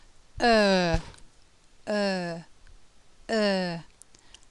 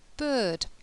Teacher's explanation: It's a long sound. The mouth is half closed, half open. The lips are relatively spread but are becoming more rounded, and in quite a strange to look at.